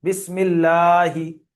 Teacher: আল্লাহ শব্দের লামের পূর্বে জের এসছে, তাই আল্লাহর লামকে বারিক করে পড়তে হবে।